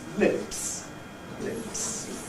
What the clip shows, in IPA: lɪps